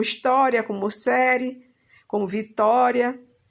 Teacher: a sílaba mais forte dela é aquela antes da última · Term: paroxítona